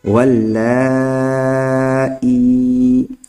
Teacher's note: حمزہ یا زیر ای، ولا، اب مد کریں گے کیونکہ حرف مد کے بعد حمزہ آ چکا ہے۔ ولائی، اور یہاں پر مد متصل ہوگا کیونکہ حرف مد کے بعد حمزہ ایک ہی کلمہ میں ہے، اس لیے۔